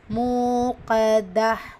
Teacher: வசனத்துடைய முடிவில் தா மர்பூத்தா வரும்போது ஹா சாக்கினா மாற்றி ஓதணும்